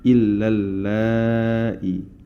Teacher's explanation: Maka itu adalah mad wajib muttasil yang mana kita baca dengan boleh 4 atau 5 harokat dan harus dengan konsistensi dalam membacanya.